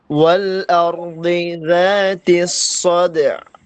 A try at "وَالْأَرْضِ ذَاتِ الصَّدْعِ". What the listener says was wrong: হয় নাই, সুন্দর হয় নাই। আরেকটু আইনটা আরেকটু ভিতরে ঢুকাইতে হবে। ওয়াল আরদি যাতিস সাদ'a। সাদ'a, সাদ'a। একটু ভিতরে, হ্যাঁ, আরেকটু ভিতরে ঢুকাইতে হবে।